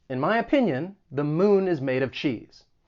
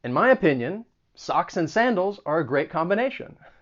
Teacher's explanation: you should hear those slight pauses right after i say in my opinion